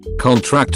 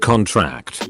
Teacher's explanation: syllables is actually indicative of the part of speech it is stress on the first syllable is a noun stress on the last syllable is a verb